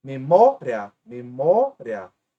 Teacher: A penúltima é a mais forte e termina em ditongo. Então aqui temos uma paroxítona acentuada.